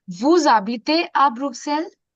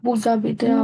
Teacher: एच का sound तो चला ही गया, वी don't pronounce H, but the rule of लियाजो will apply